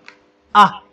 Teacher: Is articulated with a closed throat or a constricted throat.